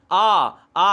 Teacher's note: तो ये कंठ हो जाएगा दोस्तों, क्योंकि गले से आवाज निकल रही है